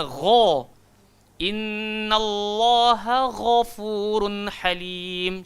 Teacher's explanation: ghain keluar dekat tempat kha kan, kat atas tekak kan